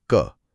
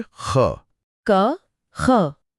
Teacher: जिन वर्णों में कम हवा लगती है वे अल्प प्राण हैं, और जिनमें ज्यादा हवा का झोंका निकलता है वे महाप्राण हैं।